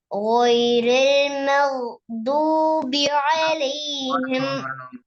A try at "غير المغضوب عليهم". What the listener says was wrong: வரல வரல கோட சவுண்ட் வரல மக்தூபி அலைஹிம் கயிறுலங்கிறது பெல கேட சவுண்ட் அங்க படிச்சீங்க கேண்டு செல்லு கேண்டு எழுத்து ஒண்டிக்குதா கேண்டு எழுத்து ஒண்டிக்குது அப்படி யார்கிட்ட படிச்சீங்க